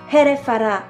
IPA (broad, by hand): hɛrɛfara